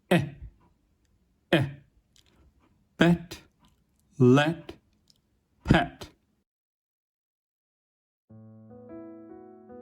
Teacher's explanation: pronounced close to the front of the mouth with unrounded lips, but not so stretched as with /i/and /ɪ/, and a relatively relaxed tongue. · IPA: /ɛ/